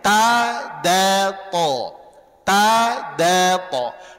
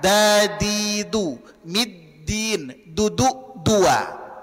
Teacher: Kemudian makhraj dal perlu difahami dan perlu dilatih, berada di belakang gigi seri atas. Ya, ujung lidah ditempelkan ke usul athana al-ulya.